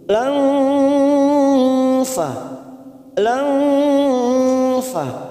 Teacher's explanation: ada nun sukun bertemu fa, maka kita samarkan bunyi nun sukun. Langfa, langfa, namanya bacaan ikhfa ausat.